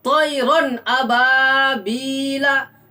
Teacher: جیسے طیرن ابابیلا، دیکھیے طیرن ابابیلا میں طیرن را کے اوپر جو تنوین ہے، تنوین کے بعد حروف حلقی کے 6 حروف میں سے حمزہ آ رہا ہے، اس لیے صرف تنوین کی آواز کو ظاہر کر کے پڑھیں گے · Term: اظہار